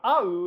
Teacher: [ʔau] in Tongan, with that glottal stop on the front